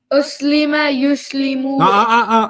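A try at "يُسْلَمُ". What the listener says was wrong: Not yuslimu. You went to the first line. First line and second line gotta be different.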